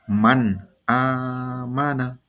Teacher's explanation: nun mati bertemu dengan huruf alif jadi bunyi nunnya benar-benar jelas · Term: izhar